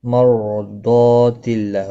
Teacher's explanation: را ساکن سے پہلے زبر ہے اس لیے پر پڑھا جائے گا، دعاد مستعلیہ ہے، پر پڑھا جائے گا، دعاد و الف دونوں پر پڑھے جائیں گے۔